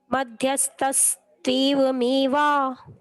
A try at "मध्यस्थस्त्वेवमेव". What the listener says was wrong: तेव नहीं है, हाँ, उसमें त्वेव है, तू एव मिलाने से त्वेव, आधा त और वेव ऐसा करके त्वेव शब्द है। बाकी तो सही था, वहीं पर थोड़ा सा कठिन था वो।